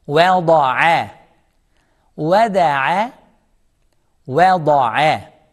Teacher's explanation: Wada'a, vowel is soft, thad is heavy, thick, ayn is soft, smile.